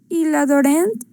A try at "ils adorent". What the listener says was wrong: Ils adorent. Nada más lo último. ENT no se pronuncia y queda hasta la R. Adore. Adore. Ils adorent, elles adorent.